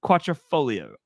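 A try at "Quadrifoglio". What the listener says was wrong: There's no T.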